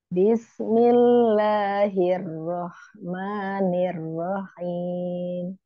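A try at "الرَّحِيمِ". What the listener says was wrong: Ya, hati-hati haknya jangan nyerempet ke kho. Rahmanirrahim. Ya, itu masih nyerempet. Jangan ditarik ke belakang, di tengah. Roh. Roh.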